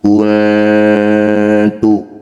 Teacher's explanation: Ketika dengung lidah kita bergeser dari posisi nun menuju tak. Kuntu. Singkatnya ketika dengung lisan kita sudah di sini. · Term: ikhfa aqrab